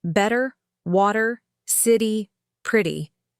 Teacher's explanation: My tongue learned to tap quickly, lightly · The T becomes soft, almost like a fast D. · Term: flap t, flap T